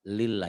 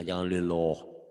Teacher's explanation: Nih lafaz Allah dibaca tipis, apabila sebelum lafaz Allah baris di bawah atau kasrah.